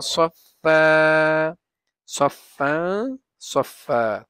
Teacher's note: তানবিনের পরে ফা আসছে জন্য এটা গুণনা করছি, ইখফা অক্ষর।